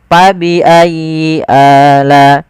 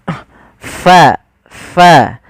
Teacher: ada angin yang dikeluarkan, karena fa salah satu sifatnya sifat hamz, yaitu mengalirnya nafas kita.